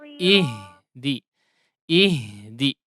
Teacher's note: Ihdi ya, dialirkan. Jangan ada seolah ada pantulan ya.